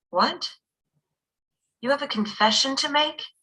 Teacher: we do the rising intonation in expressions for clarification